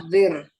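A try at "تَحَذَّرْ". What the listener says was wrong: Kalau berawalan tak tidak pernah kasroh lagi. berawalan tak itu untuk fi'il fi'il mudhari'nya nggak turun-turun dia. Tetap aja di atas. Kecuali yang tidak berawalan tak nih. Turun nih. Di mudhari sama fi'il amr turun.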